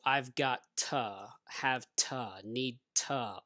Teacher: the two is usually pronounced ta